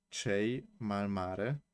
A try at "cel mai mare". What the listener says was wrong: cel with L, but it's okay already.